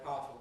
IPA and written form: ˈpaəfl̩ (powerful)